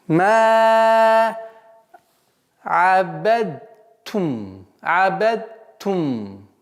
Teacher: Даль полностью ассимилируется в букву та.